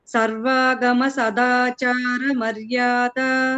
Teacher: Sadachara da is alpa prana andi.